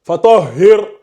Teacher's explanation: Quand c'est un kasra qui précède le ra avec le soukoun, c'est aminci.